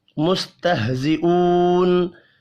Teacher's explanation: वाव मद्दा को एक अलिफ के बराबर खींच कर पढ़ेंगे।